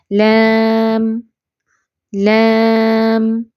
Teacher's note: लाम को थोड़ा सा लंबा करके अदा करते जब हम बतौर हर्फ पढ़ते हैं